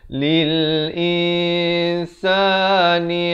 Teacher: Di sini dibacakan dengan samar. Nak kata nun pun tidak, sin pun tidak. Dengan kadar dua harakat.